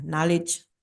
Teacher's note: So I know it, so the K sound is just weak here. You don't really hear the K sound, right? So it is just sound like N.